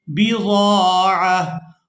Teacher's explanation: ہم اس کو ہا ساکن کے طور پر ادا کریں گے کیونکہ وقف کرنا ہے